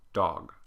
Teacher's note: this is going to be the open mid, rounded back, dog